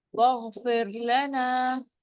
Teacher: یہاں پر را ساکن ہے، اس سے پہلے والے حرف کے نیچے زیر آ رہا ہے، را باریک ہوگی اور الف مد بھی ہو رہا ہے.